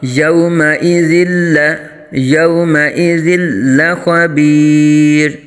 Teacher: یومئذ یہاں دو زیر کی تنوین کے بعد حروف یرملون میں سے لام آنے کی وجہ سے ادغام بلا غنہ یعنی بغیر غنہ کے یہاں ادغام ہوگا